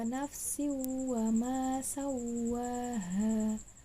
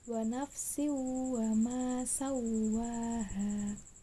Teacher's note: Bukan wa nafsin, tapi langsung dimasukkan ke huruf berikutnya. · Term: idgham bi gunnah